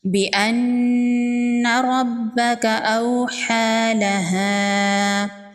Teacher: نون مشدد ہے، نون پر غنہ ہوگا